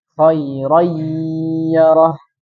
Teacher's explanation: nun sukun nah ketika kita mengucapkan apa namanya kalimat tersebut maka nunnya tidak terbaca kan nunnya hilang langsung masuk ke huruf ya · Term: Idam naqis